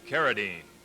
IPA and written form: ˈkærədiːn (Carradine)